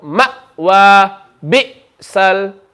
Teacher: If you didn't know this, when hamza has a sukoon, it makes a hiccup sound